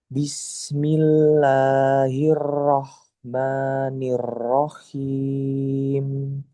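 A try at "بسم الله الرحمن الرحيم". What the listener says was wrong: Hmm, takrir ro-nya masih banyak. Coba dikurangi. Hiro, hiro. Hiro. Nirrohim. Nah, ini yang dikurangi coba. Nah, jadi di takrir cuma sedikit aja takrirnya. Eh, satu dua getaran ya. Habis itu samar.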